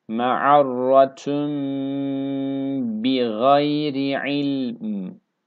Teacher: Buradaki ün sesi verdi. Bu nun iç harfini yani bu n sesini tam bir mim harfine çeviriyoruz. Yani şuradaki mim harfi gibi buna mime çeviriyoruz. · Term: iklap